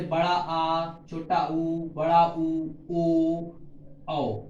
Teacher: पश्च भाग में जीभ के पीछे का पश्च भाग, जैसे बड़ा आ, छोटा ऊ, बड़ा ऊ, ओ, औ, यानी कि जीभ हमारी पीछे की ओर ध्वनि करती है